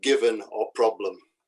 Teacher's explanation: The final sound we'll have to deal with is schwa, which is a weak, indistinct vowel sound.